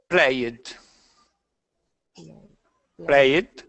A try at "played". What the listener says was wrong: Try not to pronounce the E in this one. You are pronouncing the E. First of all, read the word without the ED. Play.